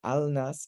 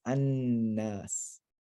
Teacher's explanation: And when you have those situations where the aleph lam is followed by a noon, al nas, the lam merges into the noon, and you lose the lam and you double up the noon. So al nas becomes annas.